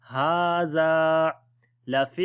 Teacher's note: Hadha, ha we long due to standing fatha on it. Zal we long due to alif madda, like 1 second